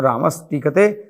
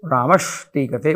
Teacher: तो यहाँ पे सकार जो है वह मूर्धन्य शकार में बदल जाएगा, अर्थात दंत्य से मूर्धन्य श में बदल जाएगा, तो रामस टीकते रामश टीकते बन जाएगा।